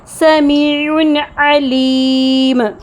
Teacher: جب عین کو ادا کرتے ہیں تو یہ گلے کے درمیانی حصے وسط حلق سے نکلتا ہے۔ جہر کی صفت کی وجہ سے سانس کا بہاؤ مکمل طور پر رک جاتا ہے، لیکن آواز نہ تو بالکل جھٹکے سے رکتی ہے جیسے حمزہ اور نہ ہی پوری طرح بہتی ہے، بلکہ نرمی سے تھوڑی دیر جاری رہ کر ختم ہوتی ہے، جسے تجوید میں توسط کہتے ہیں۔